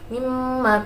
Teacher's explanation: bacaan idgham bi gunnah sebab nun sukun bertemu dengan huruf mim